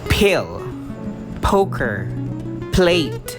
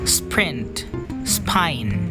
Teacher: the aspirated P obviously produces more blow of air compared to the unaspirated P.